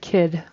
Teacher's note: d is voiced and not as much air comes out